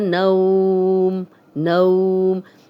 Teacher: جزم والی واو پیچھے نون پہ زبر ہے، یہ واو لین ہے اور نرمی سے بغیر کھینچے پڑھیں گے